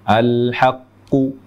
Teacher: bunyi qalqalah cenderung ke harokat dhammah. Mungkin karena melihat huruf qafnya berharokat dhammah, sehingga cenderung ke dhammah.